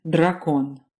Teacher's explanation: There was D as in dracon. A d articulated with the tip of your tongue against your front teeth